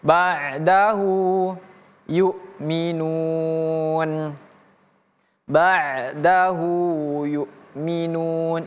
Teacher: Maka dia kita baca panjang hu dua harakat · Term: panjang dua harakat